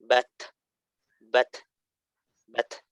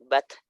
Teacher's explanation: ketika dia disukunkan, ada nafas yang berhembus gitu, ada angin yang keluar dari mulut gitu. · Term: sifat hamas